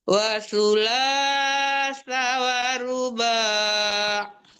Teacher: Matikan ainnya sampai ke tengah-tengah tenggorokan